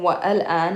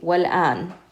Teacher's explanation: anytime you have wa and al, you're going to connect them. So we're going to say wal-an.